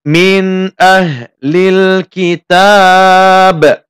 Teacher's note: tidak membaca min atau tidak ditahan lama min. Cukup membaca biasa saja, tidak ada dengung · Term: al-idhar al-halqi